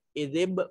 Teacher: با ساکن ہے، قلقلہ واجب ہوگا